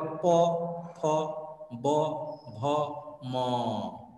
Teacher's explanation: প হলো অষ্ঠ ধ্বনি ঠোঁট এর উচ্চারণ স্থান অষ্ঠ বা ঠোঁট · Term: ঠোঁট ধ্বনি